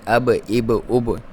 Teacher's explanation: یہ با حروف قلقلہ میں سے ہے. یہاں پہ آپ نے اب اب اب جب بھی یہاں پہ ساکن ہوتا ہے تو اس طرح کی ساؤنڈ آتی ہے